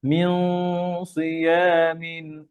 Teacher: সদ মোটা, এই জন্য গুন্না কি হবে? গুন্নার আওয়াজও মোটা হবে।